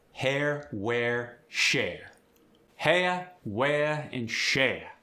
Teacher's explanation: Hair goes to aya.